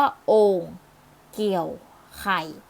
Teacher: เสียงเอกน่ะมีวรรณยุกต์อยู่ในระดับเสียงต่ำ